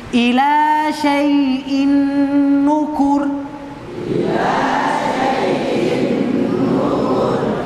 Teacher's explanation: ini seperti contoh ini Ini contohnya tidak perlu dia ber tasdid nunnya tidak tasdid tapi kita bacanya seakan-akan dia bertasdid